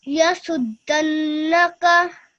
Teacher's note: your ghunna was really good. It was 2 seconds long